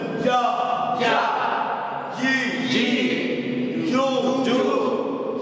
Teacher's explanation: একা পড়া যাবে না বলেন জিম জিহ্বার মধ্যখান থেকে উচ্চারণ হবে জিহ্বার মধ্যখান তার বরাবর উপরের তালুর সাথে লাগাইয়া জিম উচ্চারণ হয়